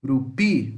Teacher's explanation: urupi, o pi é mais forte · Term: oxítonas